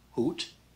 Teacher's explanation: this is hoot not hoot this is not the dutch g it's just a regular h so no rough sound